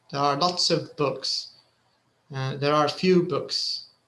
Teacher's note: when it comes to the quantifier they actually stress it along with the with the noun the item · there are is you know it's not stressed but the quantifier itself it's stressed